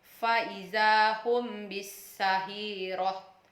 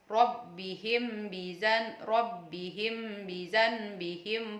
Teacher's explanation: cara membaca Ikhfa Syafawi yaitu samar-samar artinya saat membaca mint sukun disamarkan antara mim dan ba terdengar Seperti didengungkan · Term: Ikhfa sapawi